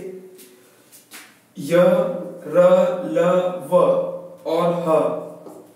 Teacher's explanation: सघोष व्यंजन जिनम कंपन होती है बोलने के दौरान कंपन होती है